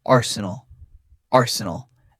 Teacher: Notice the first syllable is strong. A r and the rest is soft and quick.